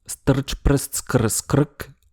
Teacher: Le R et le L peuvent servir de voyelles